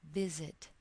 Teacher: the emphasis is on the first syllable or the stress is on the first syllable